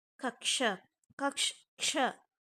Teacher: two pure consonants merge without a vowel in between them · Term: compound letter fusions